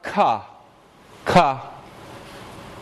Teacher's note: That's a velar stop made by taking the tongue and making a closure at the velum.